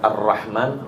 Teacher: di kalimat arrahman huruf rnya ada tasdidnya juga maka lebih panjang waktunya